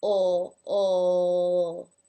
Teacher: when it is at the end of a word the L takes on a dark quality